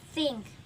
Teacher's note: dental. The place is between teeth. Jadi di dental ini dia tempatnya di antara gigi.